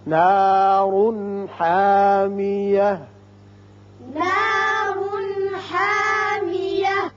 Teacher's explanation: یہاں اظہار ہوگا نون کا، چونکہ ہا آ گیا جو حروف حلقیہ میں سے ہے